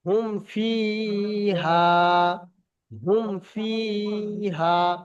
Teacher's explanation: ফি হুমফি হা আলিফ জবর হামফি হা মিম পেশ হুম মিম মিম সাকিনের পরে বার মিম আসেনি বরং ফা এসছে সেইজন্য গুন্না হচ্ছে না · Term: বিনা গুন্না স্পষ্ট